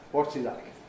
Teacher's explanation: So a High Head and a High Fall (Nucleus). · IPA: ˈwɒts i ̀_laɪk_